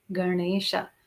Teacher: your tongue is touching the palate for Ganesha. It's not to the front, it's right at the back.